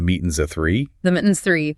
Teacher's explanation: The G disappears, the S blends into the A, and the entire sentence is compressed into a single rhythmic beat.